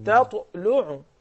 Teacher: So the ta is a qalqala letter and it is in the middle. So this is the lesser qalqala.